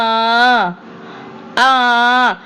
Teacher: சோ ஹன்னு வரக்கூடாது. ஆன்னுதான் வரணும். அலிபோடைய சவுண்டுதான் ஆன்னுதான் வரணும். ஆனா வாசிக்கும் போது ஹம்ஸான்னுதான் [தொண்டையைச் சரிசெய்தல்] வாசிக்கணும்